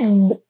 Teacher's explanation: quando eu faço esse fonema, eu vou perceber que os lábios se tocam. Então, nós temos aí uma bilabial.